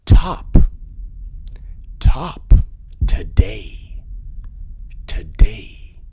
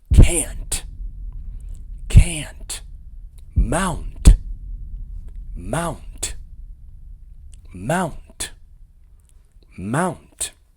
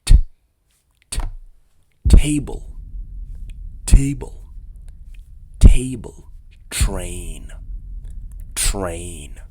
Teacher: in now for the hard tea the tea is absolutely crisp it's pronounced with a strong release of air